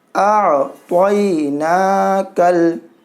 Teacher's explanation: یہ کاف کو لام کے ساتھ ملائیے